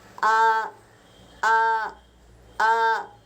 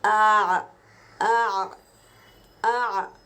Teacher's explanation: اب دیکھو عین کو بھی الف مدہ بنا دیا گیا ہے، تو عین الف زبر آ آ آ، یہ جو اسکویزنگ ساؤنڈ آ رہا ہے جیسے کپڑا نچوڑتے ہیں، اس طرح ہم حلق سے عین کی آواز کو نکالیں گے۔